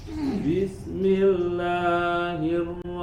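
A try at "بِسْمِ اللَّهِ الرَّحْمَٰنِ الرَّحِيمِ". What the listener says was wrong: Masih kepanjangan Kak? Bismillahi. Langsung. Nah, badnya sudah bagus. Ya, haknya sempurnakan. Ar-Rahmanir-Rahim. Sempurnakan bacaan basmalahnya. Bismillah. Kepanjangan lagi, Kak. Ingat-ingat, mad tabi'i cukup 2 harokat.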